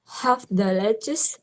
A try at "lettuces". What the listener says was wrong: lettuces. Hang on, there is S sound. Remember, you must pronounce the S sound.